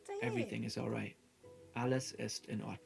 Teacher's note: languages the words of a sentence are spoken in a flow in German sometimes there's a mini pause before each individual word